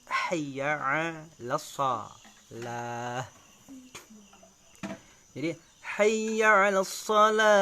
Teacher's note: Jadi nada yang pertama itu kita naikkan, nada yang kedua kita turunkan.